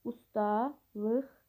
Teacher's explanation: Q samitin x kimi tələffüzü.